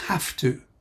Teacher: One thing to note is that although it looks like have, and we're tempted to say have, when we see it in isolation, when it comes together, with the infinitive in that way, the V becomes F, so it's have to.